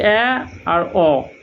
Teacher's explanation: অর্ধবিবৃত মানে আরও খানিকটা খুলে গিয়েছে। সংবিদের মতো ছোট ব্যাপারটা আর নেই, মুখে শূন্যস্থানটা আরও বড়।